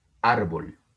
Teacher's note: tiene el acento en la penúltima sílaba, pero vean que termina en L. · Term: palabra grave